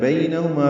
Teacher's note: بینہما بین یا لین ہے، نرمی سے پڑھیں گے، ہا اقصی حلق سے ادا کریں گے